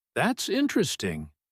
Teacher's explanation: said with a bright, rising, curious tone. This means you find something genuinely interesting or surprising in a pleasant way.